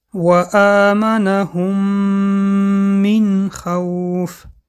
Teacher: میم اول را به میم دویوم درآورده با غنه خوانده می‌شود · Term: ادغام شفوی